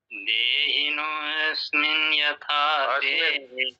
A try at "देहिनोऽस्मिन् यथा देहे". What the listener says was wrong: अस्मिन नहीं बोलना है। देहिनोस्मिन यथा देहे, तो ये साइलेंट है आप इसको भूल जाइए, सीधा आगे स्मिन बोलिए, सीधा आगे। देहिनोस्मिन यथा देहे,